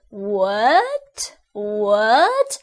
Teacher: second tone is a rising tone